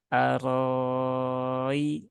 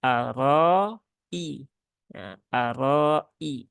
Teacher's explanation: hamzahnya harus dibaca dengan tahqik ya yaitu harus dibaca dengan jelas ya jadi jangan Ari ya tapi aroi ya aroi ya dan